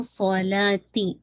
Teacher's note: مینا الصلاح میں نے یہاں پہ روکا تھا اگر آپ روکیں گے تو ٹھیک ہے لیکن اگر آپ کنٹینیو کریں گے تو صلاتی تاکہ کسرہ شارپ رکھے گا صاد کو ہیوی رکھے گا. ٹھیک ہے اور صاد پہ وسلنگ ساؤنڈ بھی ہے.